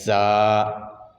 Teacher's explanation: زا دونوں دانتوں کو، اوپر والے دانت نیچے والے دانت دونوں قسم کے دانتوں کو ملانا ہے اور سختی سے اس کو ادا کرنا ہے، اس کی سیٹی ہے، اور اس کی سیٹی یہی ہے جو یہ زنجیر بن رہی ہے، یہی اس کی سیٹی ہے۔